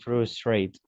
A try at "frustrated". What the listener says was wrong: frustrated. Remember that when we have a verb, or in this case, adjective with the letter T, we pronounce the final syllable. Fascinated, frustrated.